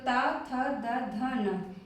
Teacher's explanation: दंत वाले अक्षर को बोलते समय हमारी जीभ दांतों को टच करती है